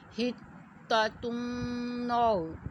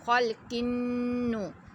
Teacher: نون مشدد آ گیا، اس کو بھی ہم نے غنہ کر کے پڑھنا ہے